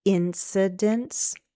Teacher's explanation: Incidents, 3 syllables, stress on the first.